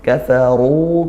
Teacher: Mad thii panjangnya satu Alif atau dua harakat kafaru ru ini ro tafkhim karena dia dah dibaca tebal maka lidahnya kita naikkan